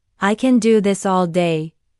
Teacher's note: Notice the stress on can and all.